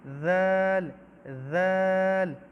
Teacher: یہ بعض لوگ کہتے ہیں یہ زال، یہ زال نہیں ہے، یہ ذال ہے، ذال۔ اپنے زبان کو اوپر دانتوں کے ساتھ ٹچ کیجئے